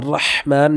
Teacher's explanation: اس ہا کو ہم نے گلے میں رگڑ کر کے پڑھنا ہوگا